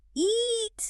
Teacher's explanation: Your tongue is incredibly tense and it's pushed high up against the roof of your mouth. The sound is elongated. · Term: the long sound